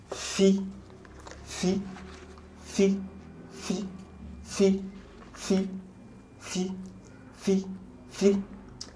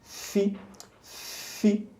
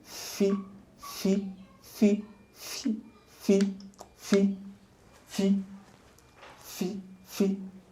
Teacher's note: The lower lips meet the upper teeth, and then there's a puff of air.